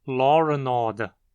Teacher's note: a maioria dos falantes acaba dizendo law and order, como se houvesse um R ao final da palavra. Isso ocorre por se extrapolar a regra que ocorre em wo para todas as palavras que terminam com a vogal O, independente de ela ter um R ali originalmente ou não. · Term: epêntese